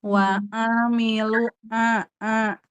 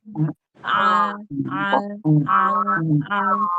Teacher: Jadi, wasul halqi adalah tengah tenggorokan. Jadi, Bu, ain bukan dari hidung, ya.